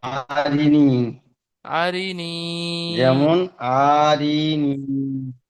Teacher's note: যেমন, যেমন আরিনি, আরিনি, যেমন আরিনি, যে আরই টান দেওয়া যাবে না, এটি দুটো হারাকাত হচ্ছে, শেষেরটা ইয়া মাদ্দা, তাই শেষেরটা টান দিতে হবে।